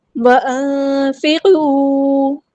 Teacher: نون ساکن کی آواز کو ہم نے یہاں پہ چھپا دینا ہے ، اخفا اور اخفا کرتے ہوئے 2 کاؤنٹ لمبا کرنا ہے.